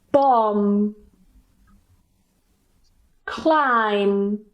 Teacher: the B at the end is Silent and we just pronounce The M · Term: silent B